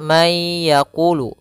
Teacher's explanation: Dia memasukkan suara nunnya dimasukkan ke huruf setelahnya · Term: idgham